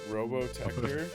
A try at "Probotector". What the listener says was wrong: No, not Robo. Probo with a P. Probotector.